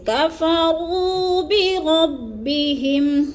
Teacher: ہم نے لمبا کرنا ہے، یا مدہ ہے، کفروا اور بربی، کفروا کی را کو اور بربی کی را کو بھی ہم دونوں کو پر کر کے پڑھیں گے، موٹا کر کے